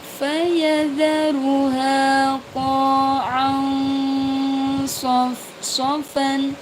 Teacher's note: Ada fathatain bertemu dengan shad dibaca samar.